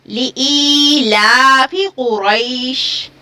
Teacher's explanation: طول بھی جائز ہے، توسط بھی جائز ہے اور کسر بھی جائز ہے. مد لین عارض کے اندر افضل ہے کسر کرنا